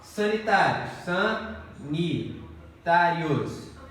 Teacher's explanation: penúltima sílaba é tônica, paroxítona. E terminada em ditongo oral. Mesma regra de próprios.